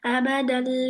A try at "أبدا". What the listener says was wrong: آبا کیوں با پر زبر ہے کیا؟ با ساکن ہے.